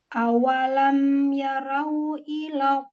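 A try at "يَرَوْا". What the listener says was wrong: Ya rau, ro-nya tebalkan. Ya rau, wow sampai monyong linnya. Ya rau, wow-nya monyong.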